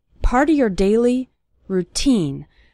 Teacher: The syllable teen is stressed in the word routine.